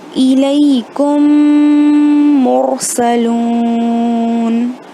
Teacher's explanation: را ساکن ہے، which is preceded by دمہ، تو اس کو منہ بھر کے پڑھیں گے، مطلب را کے پہلے میم کے اوپر دمہ ہے تو بھر کے پڑھیں گے.